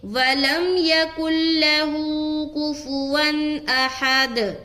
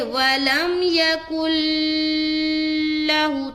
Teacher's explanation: ادغام تام جو ہم کرتے ہیں وہ غنہ کے بغیر ہوتا ہے، یعنی کہ اس میں غنہ نہیں کرنا، صرف ملانا ہے